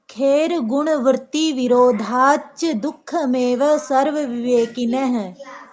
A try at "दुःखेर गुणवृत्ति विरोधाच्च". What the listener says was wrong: हाँ, चा दो हैं आपके, 2 बार चा पढ़ेंगे आप, ठीक है।